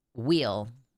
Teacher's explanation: will and wheel sound the same in many southern U.S. accents. Yeah, like, yeah, wheel, as in, like, will with a heavy southern accent.